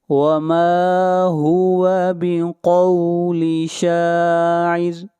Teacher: را کو باریک پڑھا جائے گا اس لیے کہ را سے پہلے زیر ہے